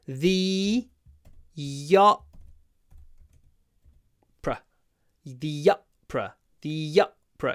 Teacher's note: You can really hear the y between the and opera in this sentence.